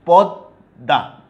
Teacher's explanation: যে বর্ণের সাথে ম যুক্ত আছে সেই বর্ণটার দ্বিত্ব উচ্চারণ হচ্ছে দুইবার, পদ্মা, দুইটাই দ, বাট মটা কিন্তু উচ্চারণ হচ্ছে না, ময়ের উচ্চারণ বিলুপ্ত হয়েছে।